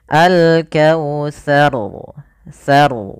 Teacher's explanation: kita baca rnya dengan bacaan tebal yang mana tsanya tidak boleh ikut tebal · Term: ro tafim